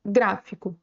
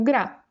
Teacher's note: percebam que a sílaba mais forte é a antepenúltima, a terceira contando do final para trás